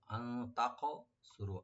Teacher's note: আন এখানে হরফে নুন সাকিন আমরা একফা করবো এখানে, লাইট গুণা। তাকসুরু, তা ওপেন রেখে কাফটাকে একটু ডিপ করে একটু কলকলা হবে এখানে।